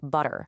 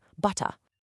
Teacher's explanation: A classic example of this is something called t flapping. In a lot of American accents, that t sound in the middle of a word like butter gets really soft, almost like a d sound, so it sounds more like butter.